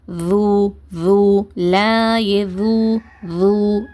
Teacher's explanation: நுனினாக்க அந்த மேல் பற்களுடைய ஓரத்துல நம்ம பதிக்கிறதுனால ஒரு லேசா ஒரு அதிர்வு ஏற்படும். ஒரு வைப்ரேஷன் தெரியும் நம்மளுக்கு.